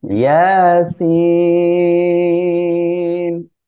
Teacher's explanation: ইয়া এখানে খাড়া জবর রয়েছে, এক এলিফ টেনে পড়বেন। সিন এখানে চার এলিফ টেনে পড়তে হবে